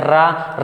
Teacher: रा कहने से जीभ कंपन करती है, इसे प्रकंपित कहते हैं